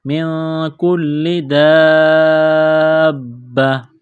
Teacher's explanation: نون ساکن کے بعد کاف ہے، حروف اخفا ہے، غنہ کریں گے، آواز ناک میں چھپائیں گے۔ کاف کو باریک کرنا ہے، لام کو دبانا ہے، تشدید کی وجہ سے سختی کرنی ہے لام میں۔